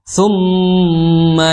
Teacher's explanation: Tsumma di situ mim bertasydid maka ditunaikan secara sempurna hukum gunnahnya.